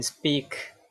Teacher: in speak, this P is realized as an unaspirated version. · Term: unaspirated P